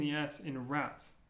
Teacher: it's like a t and an S put together